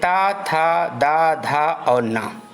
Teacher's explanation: त वर्ग दांत से उच्चरित होता है